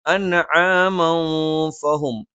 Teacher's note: തൻവീന് ശേഷം ഫ വന്നു, ഇഖ്ഫ ആണ്. നൂനിനെ അവ്യക്തമാക്കി മണിച്ച് ഉച്ചരിക്കണം.